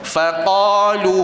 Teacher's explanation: Qa tebal, kadar dia bunyi a, bukan o.